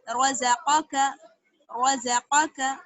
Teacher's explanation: را اور قاف کو موٹا اور زا اور کاف کو باریک